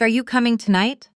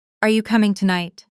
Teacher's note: For yes-no questions, like, Are you coming tonight? the pitch typically rises at the very end. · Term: question intonation